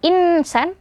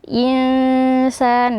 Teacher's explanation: Jadi bukan insan tapi dibaca samar nunnya. Insan, dan di sini dibaca dengung dan panjang ya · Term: ikhfa